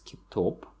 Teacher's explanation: the stress falls on the last syllable